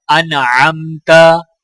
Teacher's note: حمزہ کو نون کے ساتھ ملاتے ہوئے غنہ نہیں کیا جائے گا، کیونکہ نون کے آگے حروف ہلکی عین ہے اور تا کے اوپر زبر ہے۔